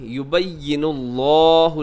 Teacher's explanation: لفظ اللہ موٹا رکھیے گا